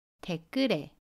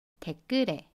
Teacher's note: 받침 리을과 모음 에가 만납니다. 그러면 받침 리을이 모음 자리로 가서 댓글에 라고 발음해요. 연음 현상입니다. 그래서 댓글에 라고 발음해요.